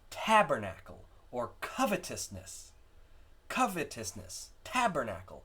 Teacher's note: have one accent followed by three unaccented syllables